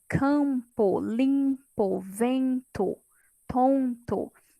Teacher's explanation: Geralmente é quando a minha vogal, ela tem, ela fica com o som de nariz tampado, né? Ela tem o som nasal, ou seja, antes do M ou do N, né?